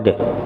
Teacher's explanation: Berarti dalnya masih ada. Sebagai tanda dalnya masih ada, dalnya dikolkolahkan qad